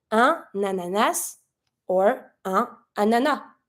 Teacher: So when you see a word that starts with a vowel, you're going to try to link this little vowel with the consonant that's before. So if you have un ananas, if you want to say a pineapple, you're going to link the N with the A.